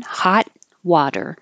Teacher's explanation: you won't hear the T in hot you'll just hold it the tongue in the T position